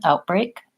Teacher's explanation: In a word like outbreak, what I think we tend to do there is the stop T happens further back, maybe all the way back in my throat. I'm still stopping the air, but I might not be saying outbreak with lifting my tongue to the T position, outbreak.